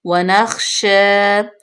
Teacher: شین کے اوپر فتح اشبائی، اس کو لمبا کریں گے